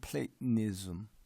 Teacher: 중간에 끊어지는 말이죠. 이거를 가지고 우리가 글로스톱이라고 해요.